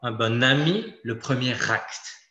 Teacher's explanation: pour les mots bon et premiers ils vont être prononcée comme au féminin d'accord c'est une particularité de tous les adjectifs qui finit sans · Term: liaison